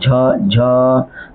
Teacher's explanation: झ झ तो आपका जो होठ होता है ना सॉरी जीभ जो होता है वो तालु में जाके सटता है